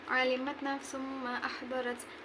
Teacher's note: idgham bi gunnah karena tanwin dhammah bertemu huruf mim, cara membacanya dimasukkan sambil berdengung. Yang kedua, mad jaiz munfasil karena mat tabi'i bertemu hamzah beda kalimat, cara bacanya panjang 4 harokat.